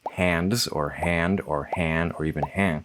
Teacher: Nasals, that's your N's and your M's, can become nasalization on the preceding vowel rather than their own segment at the end of the syllable. So, a word like hands could be hands or hand or hand or even hang or some other combination like hands that people don't always clock as being fully simplified.